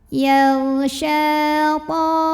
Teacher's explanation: Yal sya mad tabi'i karena ada baris fathah tegak di atas huruf shin. Maka cara baca shinnya dipanjangkan 2 harokat.